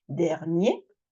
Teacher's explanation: phonétiquement je m'arrête sur le E donc je ferme